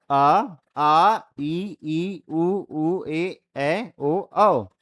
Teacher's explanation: अब निर्नुनासिक, इसमें क्या होगा? हवा केवल किससे, मुंह से निकलेगी, नाक का प्रयोग यहां पे नहीं होगा।